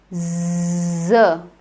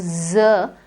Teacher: it is a sound in which when you utter the sound the air comes out but the opening for the air is very narrow so there's a narrow opening for the air to come out but there is no closure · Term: z sound